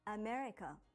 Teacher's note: For example, when you say America in English, you put stress on me and say it for longer than the other parts